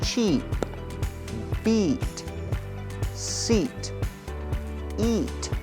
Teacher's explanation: the /i:/ sound is a long vowel sound, so you need to make the sound last a bit longer than the time you spent to make the /ɪ/ sound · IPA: /iː/